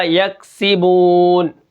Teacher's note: زیر ہے، اور با واو پیش بو ہے، تو یہ واو مدہ ہے، اس کو ہم ایک الف کے برابر کھینچ کر پڑھیں گے